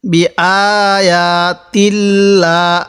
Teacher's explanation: আল্লাহ শব্দের লামের পূর্বে এই যে জের থাকার কারণে এই লামটিকে আমি চিকন করে পড়ছি, বারিক করে পড়ছি।